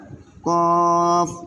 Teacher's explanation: আবারও বলি, 4 নাম্বার মাখরাজ, জিহ্বার গোড়া তার বরাবর উপরের তালুর সঙ্গে লাগাইয়া 2 নুক্তাওয়ালা কফ। এই যে উপরে 2 নুক্তা আছে, কফ।